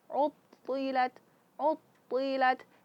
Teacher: istiala terangkatnya pangkal lidah ke langit-langit atas maka keluar dari celah yang sempit. Oleh karena itu th dibaca tebal. Utilat uttilat jangan sampai ut. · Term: huruf tebal